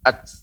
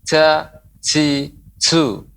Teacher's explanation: Ketika sukun dia akan nampak bahwasanya huruf ta ini mengeluarkan nafas, ya, keluarnya aliran udara.